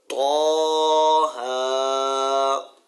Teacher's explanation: جی طا پر ہے اور ہا جو ہے یہ ہا نہیں ہے، یہ ہا ہے، سینے سے جو نکلتا ہے